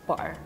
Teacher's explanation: I feel like in Scotland, we tend to cut out the T's.